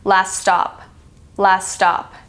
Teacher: The 2 S's kind of combine together to make a s sound